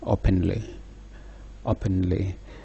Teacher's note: one accented syllable followed by two unaccented syllable